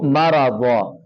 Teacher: را کو بھی موٹا کر کے پڑھنا ہے اور ضاد کو بھی موٹا کر کے پڑھنا ہے۔ دو زبر آگے، دو زبر جب وقف کے اینڈ پر آئیں تو اس کو ایک زبر آپ غائب کر دینا ہے اور ایک الف کی صورت میں اس کو باقی رہنے دینا ہے، ٹھیک ہے جی۔